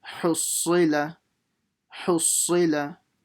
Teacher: You have to pronounce the ha properly from the middle of the throat. Then la. Hussila.